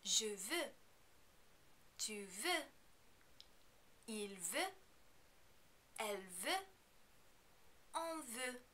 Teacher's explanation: you're not going to pronounce any of these final consonants because they are not followed by a vowel sound